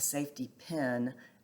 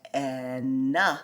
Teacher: I sometimes have my E, my short E, and my short I sound very similar